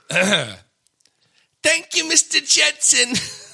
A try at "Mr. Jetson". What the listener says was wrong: there's a subtle difference in in how you pronounce J.